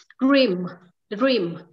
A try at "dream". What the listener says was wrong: Em vẫn không cảm nhận được cô ơi, tại vì em thấy là chị vẫn phát âm cái từ đờ, cái từ đờ nó vẫn hơi dài dài.